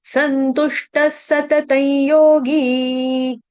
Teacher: त के ऊपर जो अनुस्वार है यानी कि बिंदी है, उसका उच्चारण करेंगे अनुनासिक य की तरह। क्यों, क्योंकि आगे योगी य से शुरू होने वाला शब्द आया इसीलिए।